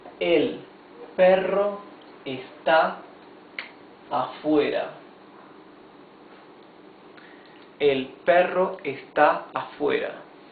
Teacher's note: since it has a double R, it has a rough sound of the R